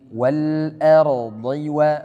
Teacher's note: Dhad dia pendek. Jangan dibaca tamtid panjang.